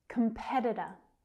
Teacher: You can hear that second syllable is the stress one, and the others are so fast. Da-da, da-da, da-da.